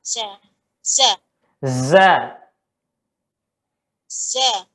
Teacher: Sofirnya seperti kerumunan lebah ya. Kerumunan lebah, bunyi besarnya itu. Bunyi suara yang menyerupai seruan burung itu ya, sofir kabir.